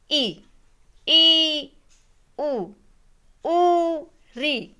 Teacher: मुख द्वार लगभग बंद रहता है, मतलब बोलते हैं पूरा बंद भी नहीं रहता, कुछ नाम मात्र का बोलने में कुछ जो आपकी वायु है कुछ बाहर निकलती है, ऐसे मानिए कुछ बाहर निकलती है। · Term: समृत स्वर